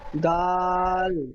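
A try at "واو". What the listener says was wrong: দাল নয়, দাল অক্ষরটি ঠিক এমন হবে, দাল ঠিক এমন থাকবে, আর এখানে মাথাটি গোল আছে ঠিক এই রকম। এই মাথাটি গোল মোড়া থাকলে ওয়াও হবে।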